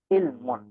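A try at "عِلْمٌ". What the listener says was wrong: ইলমুন, আইনকে আরো আমরা যদি আরো একটু কণ্ঠের ভেতর থেকে উচ্চারণ করি আরো সুন্দর শোনাবে। ইলমুন।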